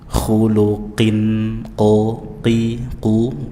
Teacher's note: diucapkan dari pangkal lidah bagian atas jangan dibaca di tempatnya kaf